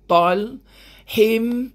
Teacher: Masukkan bunyi hin ke dalam mim jadi him. 2 harakat. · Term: idgham bigunnah